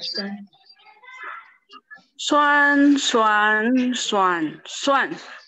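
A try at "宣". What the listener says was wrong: Oke, agak pelan aja ya. Jadi di jeda. Xuan. Ya, nada lima. Pendek, ringan. Xuan. Ya, pendek, ringan ya.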